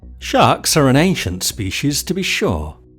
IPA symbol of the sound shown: ʃ